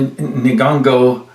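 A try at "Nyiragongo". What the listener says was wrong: It's an NY to start.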